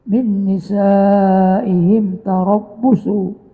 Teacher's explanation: mim mati bertemu dengan ta idhar syafawi